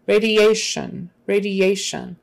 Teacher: emphasis on the second to the last syllable before the sun ti is sh radiation radiation and the ia